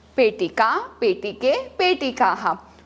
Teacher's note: विसर्ग को हम ह के जैसे साउंड करते हैं।